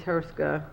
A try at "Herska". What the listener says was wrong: Ruska. But you could just, Ruska. The H is silent.